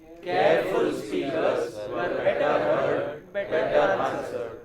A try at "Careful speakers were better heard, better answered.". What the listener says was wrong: Oh, you are not taking a good pause. Good pause should be heard. Careful speakers were better heard and better answered. Better answered.